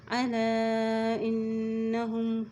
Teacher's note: لام کے اوپر مد ہے اس لیے اس کو لمبا کھینچیں گے، ان نون کے اوپر شد ہے تو اس میں غنہ کرتے ہوئے پڑھیں گے